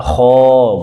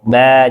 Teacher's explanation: Alif ketika sebelumnya huruf tebal, kho, bulat kan mulutnya. Ba, nyengir mulutnya. Jadi ngikutin huruf sebelumnya.